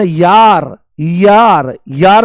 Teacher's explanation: जैसे ही आप बोलोगे य है ना, यार, यार, यार से यार बोलते ना, अरे यार, तो जैसे ही आप य बोलते हो तो य में आप ध्यान से सुनने की कोशिश करो। य बोलते ही ई की ध्वनि आती है। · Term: अर्धस्वर